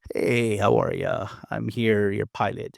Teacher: Notice how they have that breathy, creaky voice.